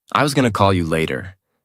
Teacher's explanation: Going to becomes gonna. The whole sentence flows more smoothly.